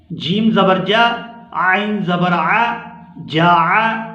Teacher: عین کو بھی اچھی طرح حلق سے ادا کریں گے کیونکہ حمزہ اور عین کی آواز ہم مختلف ادا کریں گے۔